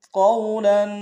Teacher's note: قو کو واو کے سامنے لائیں گے، واو لین بغیر کھینچے پڑیں گے، لام کے اوپر تنوین غنہ کریں گے۔